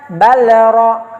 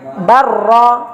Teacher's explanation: Tetap dibaca lam dimasukkan kepada huruf berikut ra dengan tanpa guna. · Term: idgham mutaqaribain